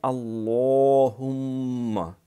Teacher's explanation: تو اس میں اللہم، ایک تو اللہ لام موٹا کرنا ہے، پھر ہم میم کے اوپر شد ہے لہٰذا غنہ کرنا ہے، ایک الف جتنی دیر لگانی ہے۔